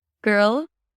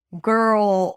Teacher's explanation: To make the L, the tip of the tongue goes up to touch the roof of the mouth. But when the L appears at the end of the word, it's a dark L. So basically, you're engaging the root of the tongue a lot more. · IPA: ɡɜːrl